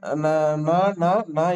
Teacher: நாவின் நுனி மேல்வாய் அன்னத்தின் நடுப்பகுதியை தொடுவதனால் நகரம் பிறக்கிறது